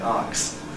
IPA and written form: ɑːks (ask)